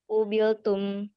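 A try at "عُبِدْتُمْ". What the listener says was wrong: Jangan pakai lam, nggak ada lam di situ. Di abada nggak ada lam. Jangan terpengaruh sama yang di layar. Ubida, ubidu, ubitta, ubittum.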